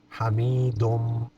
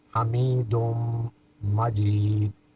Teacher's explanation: ناک میں آواز لے جائیں گے، حمیدم، دال کو میم کے ساتھ